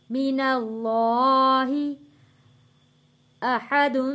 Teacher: یہاں پہ اللہ کا لام ہم نے موٹا پڑھنا ہے، کیونکہ اللہ کے لام سے پہلے یہاں پہ زبر ہے، تو یہاں اللہ کا لام موٹا پڑھیں گے.